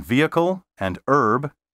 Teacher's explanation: don't pronounce the h in vehicle and herb